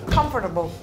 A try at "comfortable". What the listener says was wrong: You don't pronounce the second O. Comfortable.